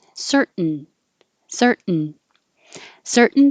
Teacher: native speakers are going to put the tongue in the t position and then just hold it there cert and make the noise of the n certain certain certain